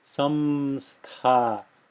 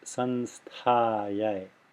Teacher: it flows easier with less mouth movement, more effortlessly, if you make this into a dental nasal, sun, and then go on to the stha. · a labial nasal there, which has the lips closed, a labial nasal means the letter ma.